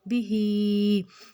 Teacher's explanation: बा को बिल्कुल भी नहीं खींचना और हा को खड़ी हरकत में दो हरकत जितना लंबा खींचना है